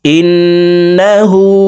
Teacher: ঠোট গোল করে এক আলিফ টেনে পড়ব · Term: উল্টা পেশ